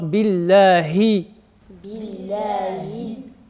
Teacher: Il faut bien faire تحقيق الكسر, il faut bien insister sur la voyelle de la kasra, i, donc il faut bien descendre la mâchoire, billahi. Et sur ism al-jalala Allahi, donc Allahi, il y a beaucoup d'air qui sort au niveau du ha